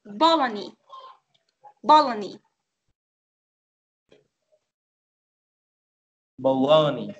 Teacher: The stress is at the second syllable.